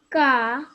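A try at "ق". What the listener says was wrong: Qaf. So try say it with a little bit more heavy sound. Qaf.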